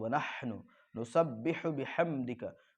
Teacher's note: बिहम यहाँ पर जो है मीम का इजहार होगा